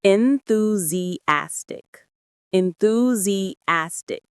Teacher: The main stress is on that fourth syllable